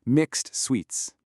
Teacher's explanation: The word mixed gives us the cluster kst, and sweets begins with sw. You put them together and you get this five-consonant beast, ksswa.